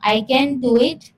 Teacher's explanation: Tone rising, expressing doubt.